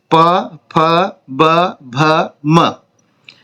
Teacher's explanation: इनका उच्चारण स्थान जो है वह ओष्ठ होठों से इनका उच्चारण किया जाता है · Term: प वर्ग